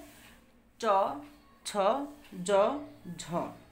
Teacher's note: জিভের সামনের অংশ প্রসারিত হয়ে শক্ত তালুতে বাধা পায় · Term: তালব্য ব্যঞ্জন ধ্বনি